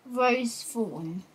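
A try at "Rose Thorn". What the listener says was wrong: Rose Fawn. Fawn. It's not fawn, it's a thorn.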